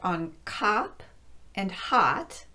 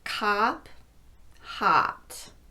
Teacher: on cop and hot, which both use the short ah sound, I'm not rounding my lips.